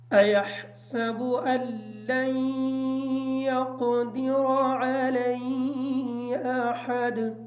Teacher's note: سین کو کلیئر کریں گے تاکہ سواد کی آواز ادا نہ ہو